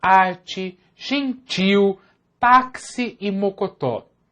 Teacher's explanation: a tonicidade recai sobre a sílaba inicial em arte e táxi e sobre a sílaba final em gentil e mocotó. Além disso, você notou que a sílaba tônica nem sempre recebe o acento gráfico.